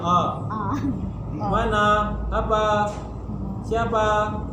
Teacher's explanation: Kalau fathah kita ataupun bunyi vokal a kita agak lebih terbuka